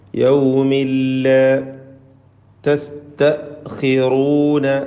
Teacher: യൗമിൻ എന്ന തൻവീൻ ശേഷമുള്ള ലാമിൽ മണിക്കാതെ ലയിപ്പിച്ച് ഉച്ചരിച്ചു കൊണ്ട് ഓതണം. ഇദ്ഗാം ബിഗൈരി ഗുന്ന.